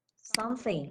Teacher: The TH always considered as an unvoiced sound, like in the term something. Okay, we are not using our voice, only this the wind blow coming from our mouth.